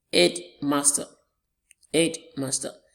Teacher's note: Our stress is on the first syllable. The word is a 3-syllable word, headmaster.